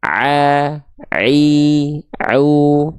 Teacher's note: Kesalahan kedua adalah jangan sampai suara ain ketika dilafalkan masuk ke dalam rongga hidung sehingga menghasilkan suara yang karakternya sengau atau berdengung. Itu salah.